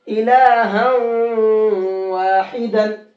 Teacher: अब इसमें वाव की ही आवाज निकलेगी और साथ में गुन्ना करके पढ़ेंगे